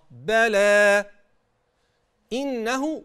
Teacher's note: طيب الآية اللي بعديها هنقف عند كلمة بلى وتبدأ إن ربه كان به بصيرا. وانت بتقف على كلمة بلى ما تقطمهاش، في عندك مد طبيعي أعطيه حقه، بلى إنه، وتحقق الهمزة بالكسرة كده، إنه، إنه كان به بصيرا.